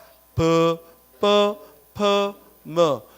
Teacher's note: 모두 입술을 부딪혀내니까 이를 입술소리